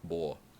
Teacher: The or sound goes to u like more and bore.